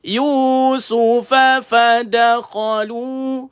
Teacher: Su satu, fa satu, fa satu, da satu, kha satu, lu dua. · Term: satu harakat